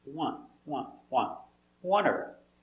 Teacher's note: that T is almost silent. The tongue comes up a little bit, but not much.